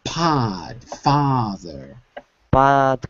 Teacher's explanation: I'm still hearing o I want to hear ah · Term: the sound a